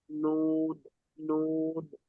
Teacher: জিভের আগা এবং তার বরাবর উপরের তালুর সাথে লাগিয়ে উচ্চারিত হয়